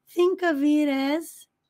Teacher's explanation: O F vai fazer um som de V, vai se conectar com o I. O T, que está vindo entre sons de vogais, vai se conectar com o A, fazendo um sonzinho de R.